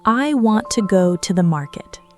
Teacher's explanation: Spoken naturally, the words want, go, and market receive strong, clear stress. The words [music] I, to, to, and the, shrink dramatically, [music] compressed and quiet, almost swallowed entirely. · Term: strong stress, weak stress, sentence stress